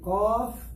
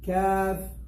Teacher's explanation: They are both of them from the back of the tongue, but one is deeper.